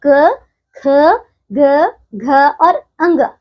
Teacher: और इनका जो उच्चारण स्थान है वो है कंठ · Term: क वर्ग